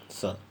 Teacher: दंत स में जिह्वा निचले दांत को पूर्ण रूप से छूती है